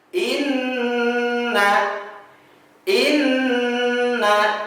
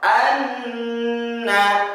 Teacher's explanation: kita harus mengucapkan bunyinya dengan sengau selama dua ketukan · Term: nun dengan tashdid